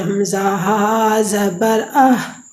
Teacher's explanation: حلق کی آخر سے جو سینے کی طرف حصہ ہوتا ہے اسے ہا ادا ہوتی ہے